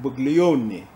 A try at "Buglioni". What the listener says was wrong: The G is silent. Yeah, so the G in Buglioni is silent. So, the G, it's not Bugli, it's Buglioni. Buglioni.